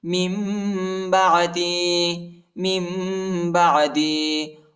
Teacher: میم کی آواز نکالیں گے اور اخفا بھی کریں گے